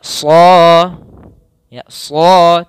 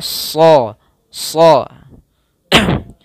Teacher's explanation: ujung lidah di antara Gigi atas dan Gigi bawah kemudian pangkal lidahnya terangkat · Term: Shad